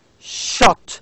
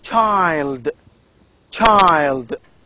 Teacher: Now, the second one, as in child, is represented as in this simple, that is ch, child, child. You can feel that there is a sound t before sh. It's ch.